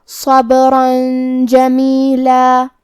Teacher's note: کلمت جمیلہ جیم حروف الاخفاء میں سے ہے اور اخفاء کا معنی ہے چھپا دینا، تو ہم یہ تنوین کو چھپاتے ہوئے لیکن غنہ کے ساتھ یہ حکم کو ادا کریں گے